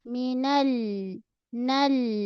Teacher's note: pada lam, lama sikit sentuhan pada lam. Tepi ujung lidah ni, okey, menyentuh gusi gigi atas.